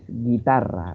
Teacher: ahí suena la I y se omite el sonido de la U